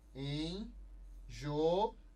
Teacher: Porque você tem o encontro de duas vogais e sílabas separadas. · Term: hiato